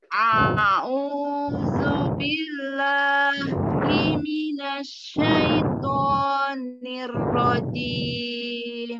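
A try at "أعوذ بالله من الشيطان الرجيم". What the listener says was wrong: Himinasyaito. Huruf to-nya ditebalkan lagi. Syaito. Syaito, to,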